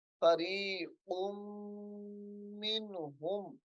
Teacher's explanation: فریق قاف کو میم کے ساتھ ملانا ہے تو غنہ ہوگا